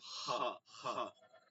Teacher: হ উচ্চারণ হবে হলকের শেষ, এখানটা হলকের শুরু, এটা মানে কণ্ঠনালীর শুরু, মাঝখান শেষ।